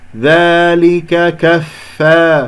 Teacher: فا أريد هواء وأريد يعني همس وأريد رخاوة جريان الصوت